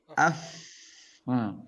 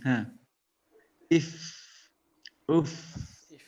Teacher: Dia memiliki sifat fa itu hamas, keluar udara. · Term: huruf fa